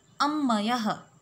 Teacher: The word up ends with pa and is followed by halant ma. So as per the rule, pa will get replaced with ma. So we get the sandhi ammayah. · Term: anunasik sandhi